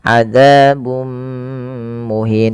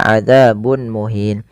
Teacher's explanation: memasukkan tanwinnya kepada mim dan ditahan adzabum muhin tidak dibaca adzabun muhin. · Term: idgham bighunah